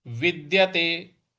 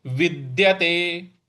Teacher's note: जो द है इस पर हम थोड़ा सा बल लगाएंगे